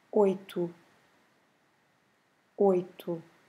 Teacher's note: every time we have a O at the end of a word, the right pronunciation is U